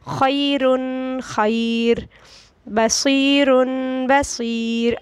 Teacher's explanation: را ساکن سے پہلے یا ساکنہ آ جائے تو اس کو ہم باریک پڑھیں گے